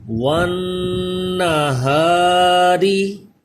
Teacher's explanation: نون مشدد میں غنہ کریں اور را کو باریک پڑھا جائے گا کیونکہ را کے نیچے زیر ہے